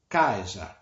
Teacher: El acento va sobre la A, el tono va sobre la A